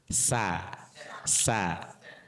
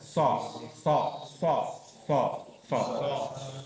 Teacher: Kalau so itu tebal hurufnya. Kenapa? Karena lidah tengahnya ini diangkat nutupi ke langit-langit. Kalau sa itu begini datar.